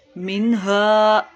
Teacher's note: منہا، نون ساکن کے بعد دیکھیے ہا رہا ہے، اظہار کا قاعدہ ہے، اس کا مطلب ہے نون میں ہم نے بالکل بھی گناہ نہیں کرنا۔ منہا، الف سے پہلے حرف کے اوپر زبر ہے تو الف مدہ کا قاعدہ۔